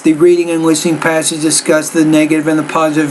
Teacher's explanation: you're kind of using pretty much the same tone the same emphasis on all the words in there